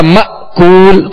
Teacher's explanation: تو اس حمزے کو ہمیشہ یاد رکھیے گا کہ جھٹکا دے کر ادا کریں گے تو حمزہ ادا ہوگا. دوسرا حمزہ ساکنہ جب ہی ادا ہوگا جب اس میں جھٹکا دیں گے. اگر جھٹکا نہیں دیں گے تو نرمی پیدا ہو جائے گی جیسے آ، تو اب یہ کہ دوسرا حمزہ ادا نہیں ہوگا.